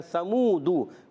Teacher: سا پر زبر ہے، میم واو پیش منہ، سا کی زبر کو نہیں کھینچنا مگر میم واو پیش منہ اس کو ایک الف کھینچنا ہے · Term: حرف مدہ